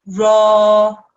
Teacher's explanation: So what happens is this ra sound, which is made by the ra and the fatha, this alif madda prolongs that ra sound. It lengthens that ra sound.